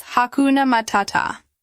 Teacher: Notice how we emphasize the second syllable in each word. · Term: stress pattern